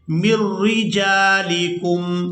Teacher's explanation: इस नून साकिन को छोड़ देंगे, मीम को रा मुशद्दद के साथ मिलाकर अदा करेंगे